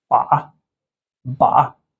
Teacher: It falls a bit and it goes upward longer.